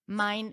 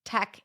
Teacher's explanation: If you drop sounds, mine instead of mind, tech instead of texts